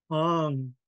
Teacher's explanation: blowing lots of air from the back of the throat